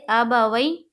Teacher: جیسے ابا وئی، یا ساکن سے پہلے زبر ہے، یائلین ہوگی، یائلین کو نرم آواز کے ساتھ جلد اور معروف پڑھیں گے